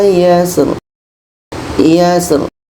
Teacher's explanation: Ro ini pun dibaca secara takkhim tebal